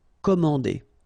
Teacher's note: remember A and N together, so it's nasal, en.